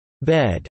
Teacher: an open-mid front unrounded vowel similar to General American English bed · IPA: /ɛ/